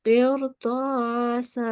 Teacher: there is a ra sakin, and beforehand there is a thick letter. So you will also pronounce the ra in a thick way.